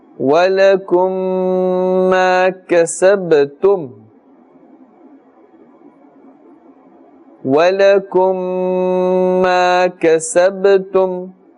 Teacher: We can see the 2 memes there. The first meme is a sakin, followed by another meme, and therefore idgham shafawi is taking place, and ghunna is taking place.